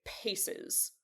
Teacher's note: if you start the pronunciation before the voicing, you get the aspiration, so you get paces